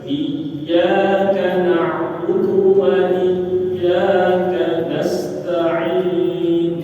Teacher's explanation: di dalam huruf ya ini tasydid dan harus ditekankan untuk memperjelas bacaan bahwasanya di dalam huruf itu ada tasydid